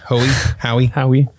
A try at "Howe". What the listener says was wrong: The E is silent.